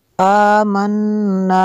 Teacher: کھڑا زبر کو کھینچنا ہے اور آگے الف مدہ ہے اس کو بھی کھینچنا ہے